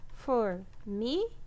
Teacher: A sílaba mais forte é o mi, tá? É a penúltima, também é uma paroxítona.